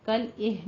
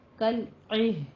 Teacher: عین کے نیچے کسرہ ہے، باریک کر کے پڑھنا ہے، اور ہا کی آواز عکس حلق سے نکالنی ہے ، اہ میں قلقلہ نہیں کرنا ہے، ٹھیک ہے، کل اہ